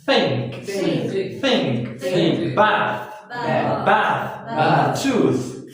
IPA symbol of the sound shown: θ